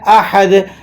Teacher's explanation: ہا حلق کے بیچوں بیچ سے نکلے گی